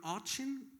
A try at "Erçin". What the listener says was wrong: With E instead of A, Erçin.